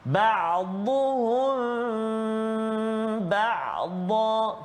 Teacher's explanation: Mim mati bertemu dengan ba. Ikhfa syafawi dengung dengan kadar 2 harakat, rapatkan bibir kita.